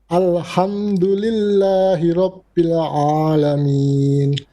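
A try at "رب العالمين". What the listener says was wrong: Okay, your ayn as well. Instead of saying Rabbil Alamin, ala. No. Rabbil Ala. Completely flat. Rabbil Alamin.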